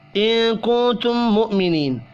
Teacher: نون ساکن کے بعد کاف اخفاء حقیقی ہوگا